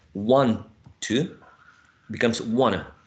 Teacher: There is a reduction of the full u to reduced schwa.